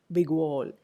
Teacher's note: The lips would be more stretched in g by itself, but in the vicinity of the w sound here, in a phrase like big wall, we notice that g becomes lip rounded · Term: allophonic change